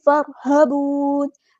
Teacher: را یہاں پر heavy letter ہے، پورا ادا کریں گے